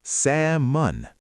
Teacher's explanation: Many learners pronounce salmon with the L. But the L is silent. It's salmon.